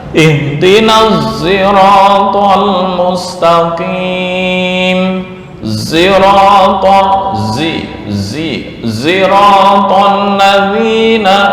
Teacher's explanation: Imam Hamzah itu mengganti semua lafal sirat dengan za, atau mencampurkan sod dengan za. Nah, ini yang disebut dengan ismamu as-sad bi az-zai. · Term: ismam bis saut